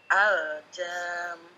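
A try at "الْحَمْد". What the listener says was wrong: Enggak ada titiknya. Dalnya mantul.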